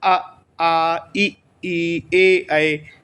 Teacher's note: ओष्ठों की आकृति वृत्ताकार नहीं है, ऊपर नीचे की तरफ खुल रहे हैं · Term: अवृत्ताकार